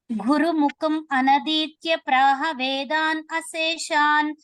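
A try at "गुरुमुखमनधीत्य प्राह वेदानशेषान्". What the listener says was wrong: మీరు కలిపి చదివినప్పుడు కలిపే చదవండి. గురుముఖం అనధీత్య ప్రాహ వేదానశేషాన్.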